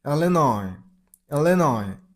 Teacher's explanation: there is a s at the very end of the word, but you shouldn't make the s sound. It's pronunciation is linoi.